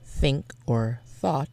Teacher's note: If a letter is voiced, that means you just need to use your vocal cords to make that sound. The TH sound in think or thought is the unvoiced dental fricative because you don't need your voice to do it. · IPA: θ